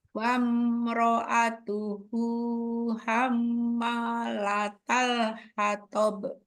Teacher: sudah belajar mim tasdid rasanya harus dengung.